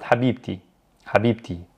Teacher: Or if I want to say the love of or the car of someone, I pronounce the T when I'm connecting it to another word. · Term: ta marbuta